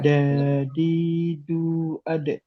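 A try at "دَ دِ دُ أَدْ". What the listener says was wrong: Nah, jangan ada suku, jangan ada hamzahnya ya. Ade, tapi ade, ade.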